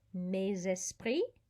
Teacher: we have a liaison there because esprit starts with a vowel and so the s carries over meses pre remember also don't pronounce the s or the t